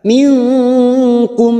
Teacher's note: nun sukun bertemu kaf, ikfa hakiki kita samarkan bunyi nun sukun 3 harokat.